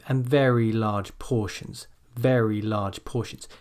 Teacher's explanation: So it's not like you're stressing each word individually and you're saying very large portions, but it almost becomes like one unit, and you start at a high point and you come down.